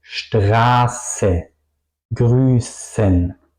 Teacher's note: si pronuncio Straße, mi lengua toca al final del sonido de S un poco mis dientes de arriba y mi paladar.